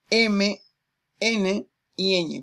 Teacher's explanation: Las nasales, el aire sale por la cavidad nasal, por la nariz